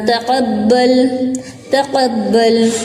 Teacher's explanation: قاف کو منہ بھر کے پڑھیں گے